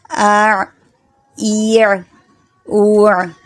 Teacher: یہ تھوڑا جو ہے آپ کو دھیان سے پڑھنا ہوگا کیونکہ پہلے حمزہ اور پھر عین. حمزہ کی آواز لیتے ہوئے جانا ہے عین کی جگہ پر. اع، ایع، اوع.